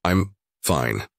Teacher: said with a flat, low pitch and slow pace